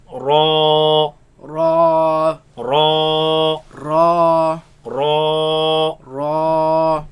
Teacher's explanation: Ra is sometimes heavy, sometimes light. But here we're going to pronounce it heavy. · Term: heavy letter